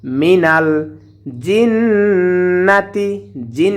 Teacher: গুন্না হবে কারণ নুনের উপরে তাসদীদ এসেছে